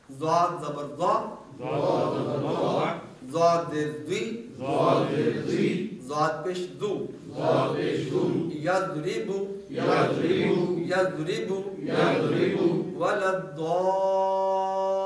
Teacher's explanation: زبان کا بغلی کنارہ یعنی کروٹ اور اوپر کی داڑھوں کی جڑ دائیں یا بائیں، یہاں سے ضاد ادا ہوتا ہے. بائیں طرف سے آسان ہے.